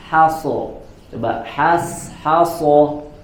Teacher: Nah, di sini ada dua huruf H yang masing-masing huruf berdampingan dengan huruf shad, ya, di mana huruf shad merupakan huruf isti'la dan bahkan, ya, huruf shad adalah huruf itbaq yang sangat tebal bacaannya. Maka pada huruf H-nya harus diperhatikan tidak terpengaruhi, ya, oleh huruf shad. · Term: istifal